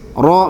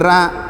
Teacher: kalau orang Padang itu kalau yang tebal-tebal itu jadi tipis, ro misalnya jadi ra ya